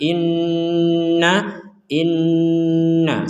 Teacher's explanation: Nun bertasdid sama-sama kita dengungdengungkan